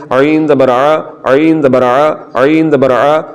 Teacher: اور عین کو حلق کے درمیان والے حصے سے پڑھنا ہے